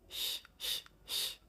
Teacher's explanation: There's no vibration of the vocal cords.